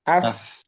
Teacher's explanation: untuk dicek apakah ada getaran atau tidak. Af, nah, ketika disukun itu nggak ada getaran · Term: hamas